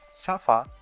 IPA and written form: sʌfə (suffer)